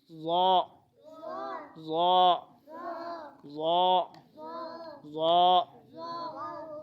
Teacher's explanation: اس کو ناک میں نہیں لے کے جانا، بیچ میں پیش بھی نہیں